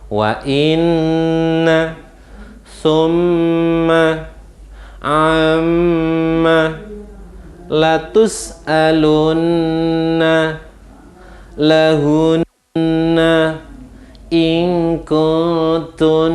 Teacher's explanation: Wa inna summa amma latus alunna lahunna in kuntunna. Jadi wajib dibaca dengan bacaan gunnah, satu alif dua harokat, tapi ketukannya tidak terlalu cepat, ketukannya agak dilambatkan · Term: bacaan berdengung